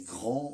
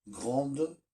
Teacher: au masculin, le D se prononce pas, mais au féminin, il se prononce, puisque le E y est rajouté